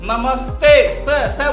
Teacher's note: नमस्ते स बोलिए तो आपकी जीभ देखे कहाँ जा रही है, दांतों की जड़ पे जा रही है, ऊपर की जड़ों पे, है ना। जैसे आप बोले सीताफल, बोलिएगा सीताफल, सीता तो कहाँ जा रहा है, दांतों के ऊपर की जड़ पे जा रहा है ना। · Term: रे वाली स